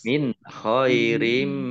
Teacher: nun sukun bertemu dengan huruf kha, bacaan izhar dibaca jelas